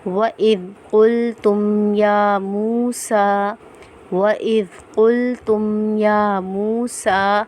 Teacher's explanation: سین کے اوپر بھی کھڑا زبر ہے تو ہم ایک الف کی مقدار کھینچ کر پڑھیں گے